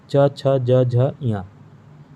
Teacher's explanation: ये किसके माध्यम से बोला जाता है? तालब यानी तालु के माध्यम से। तालु के माध्यम से ये 5 वर्ण। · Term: च वर्ग